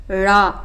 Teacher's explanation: நாவின் நுனி மேல் நோக்கி வளைந்து வருடுவதால் டேஷ் எழுத்து தோன்றும்.